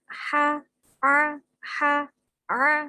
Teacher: Ha tempatnya di tengah tenggorokan, maka harus dibaca jelas.